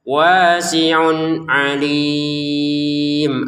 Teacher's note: wasiun bertemu ain dibaca dengan jelas. Kemudian alimnya dibaca en harakat.